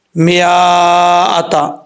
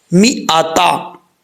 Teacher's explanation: اگر آپ جو بھی لوگ پڑھ رہے ہیں ان کو اس بارے میں علم نہیں ہے، اگر ایسا نہیں ہے کہ وہ پڑھیں گے میاتا، یہ غلط ہے۔ میم کے آگے جو الف ہے یہ نہیں پڑھا جائے گا، میم زیر می، حمزہ زبر آ، می آ، تا زبر تا، می آتا، ٹھیک ہے۔